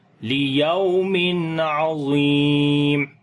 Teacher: تنوین کے بعد عین آ گیا تو یہاں پر اظہار کریں گے، یعنی کہ میم تنوین کی آواز کو جو ہے وہ ظاہر کر کے پڑھیں گے · ضا کو موٹا پڑھیں گے، لمبا بھی کریں گے، یا مدہ ہے